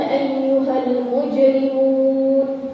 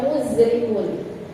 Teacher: Jim itu ada qalqalahnya. Ya, ini yang suka tukar biasanya huruf jim dibacanya za. Ya, jangan dibaca muzrimun.